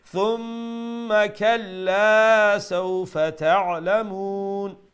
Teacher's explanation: make sure you pronounce the alif of the kalla, so make the la one alif long.